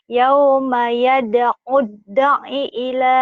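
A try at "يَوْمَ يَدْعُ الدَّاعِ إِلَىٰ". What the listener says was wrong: Danya panjang. Danya panjang. Daknya panjang. Panjang kan matobi itu.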